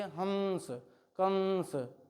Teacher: जैसे ही आप हंस बोलेंगे। कंस बोलेंगे नासिका से कुछ ना कुछ ध्वनियां निकलेंगी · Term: अनुस्वार